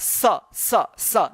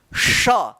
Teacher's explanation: दोनों दांत के बीच में जीभ आता है तब निकलता है स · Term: दंत स